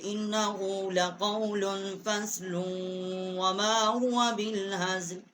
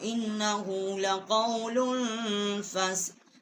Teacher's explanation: وقف کریں گے تو یہاں پر ہم وقف کر لیں گے، اگر ملا کر پڑھیں گے تو لام کو ہم واو کے ساتھ مشدد کریں گے